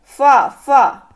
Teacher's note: आप फा बोल रहे हैं तो यहाँ पे आपको ओठ, दोनों ओठ आपके सट रहे हैं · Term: ओष्ठ